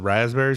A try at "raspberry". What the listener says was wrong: It's raspberry. If you're not going to pronounce the P, don't say the word.